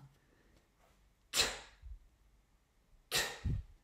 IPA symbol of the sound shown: t